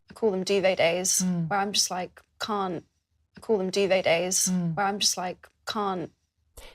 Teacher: Notice that does not make a /t/ sound at the end of the word 'can't'.